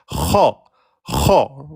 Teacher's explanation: La lettre Kha est une lettre emphatique. Elle se prononce de façon grave.